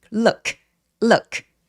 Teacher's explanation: look 동사는 동사 원형이 크 소리, 그러니까 K 소리가 무성음이에요. 성대가 울리지 않는 무성음.